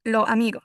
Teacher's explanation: Eh, algunas veces se comen o cambian letras en vez de decir los amigos. Muchas personas lo dicen como lo amigo. Se pierde la s al final.